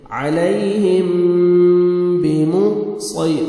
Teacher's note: لست علی، یا لین ہے، نرمی سے ادا کریں گے، علیہم، میم ساکن کے بعد با ہے، یہاں پہ اخفا کریں گے، نوز میں ساؤنڈ لے کے جائیں گے